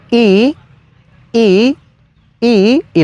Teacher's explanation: es la vocal larga con Tono alto es decir la i alargada pero con un tono elevado